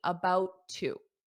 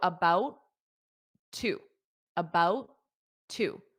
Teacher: notice how I don't pronounce that t on about because there's already a t on two